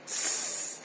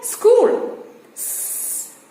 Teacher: it is just a voiceless alveolar sibilant